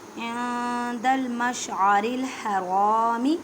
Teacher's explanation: نون ساکن کی آواز کو چھپانا ہے